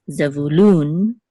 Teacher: And in English, it's Zebulun, accent on the first syllable. But in Hebrew, it's Zevulun, accent on the last syllable.